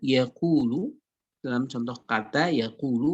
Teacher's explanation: Dan yang paling kemudian lemah secara qalqalah adalah huruf-huruf qalqalah yang terbaca dalam keadaan mutaharrik, yang dalam keadaan berharokat. Sehingga dia tidak kentara sama sekali qalqalahnya. Dalam contoh kata yaqulu, dalam contoh kata yaqulu, maka dia tidak terdengar, tidak kentara qalqalahnya, tapi memang ada sifat qalqalah di situ.